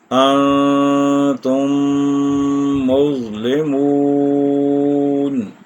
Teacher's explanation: ادغام شفوی جو ہے اس کو جب ہم ادا کریں گے تو ہم اس پر 1 الف یا 2 حرکات کی مقدار ٹھہریں گے، رکیں گے، یعنی غنہ کریں گے